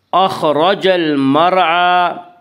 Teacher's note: المرعى کی را کو پر پڑھیں گے